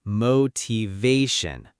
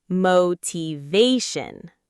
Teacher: Many learners say motivation, but the correct stress is on the third syllable